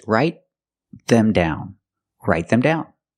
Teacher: The T in write is a stop T because it's before a consonant.